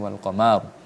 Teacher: rnya ini dibaca dengan tebal karena didahului oleh huruf yang kemudian berharakat fathah